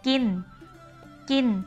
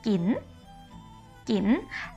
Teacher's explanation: So, it's the word to eat,In Thai, in Central Thai, we say gin, gin. But in Northern Thai, you have to put the rising tone for this word. So you say gin, gin.